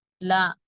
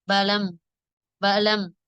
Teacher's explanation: கதவு கனவு என்பதில் உள்ள கவை போன்று உச்சரிக்க வேண்டும் அடுத்து லாம் லா நாவின் நுனி மேல்முரசுடன் இணையும் போது உண்டாகிறது